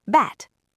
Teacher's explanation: Bat has an unvoiced t, so the vowel's fast. Bat. Bad has a voiced d, so the vowel's long.